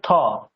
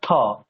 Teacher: একটা হচ্ছে তহ আর একটা থহ। থয়টা একটু মহাপ্রাণ, মানে একটু জোর দিয়ে বলতে হবে থ, একটা ত আর একটা থ।